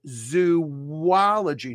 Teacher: we split the O's and we throw in a hidden W between the O's. We say it as zoology.